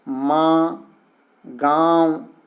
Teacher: अनुनासिक स्वरों के उच्चारण में मुंह से अधिक तथा नाक से बहुत कम सांस निकलती है · नाक से भी निकल रहा है लेकिन नाक से कम और मुंह से ज़्यादा निकल रहा है, जबकि अनुस्वार जो होता है उसमें नाक से निकलता है।